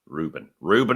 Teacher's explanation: I put the emphasis on the first syllable